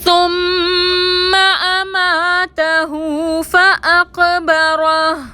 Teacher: فاقبرہ میں قاف ساکن پر کلکلا کریں گے، را پر زبر ہے، را کو موٹا پڑھیں گے.